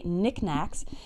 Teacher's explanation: the K at the beginning of Nick and knack are both silent